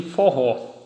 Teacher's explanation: forró é a sílaba mais forte a última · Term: sílaba tônica